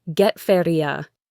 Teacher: And you at the end of a question like this often reduces to yah.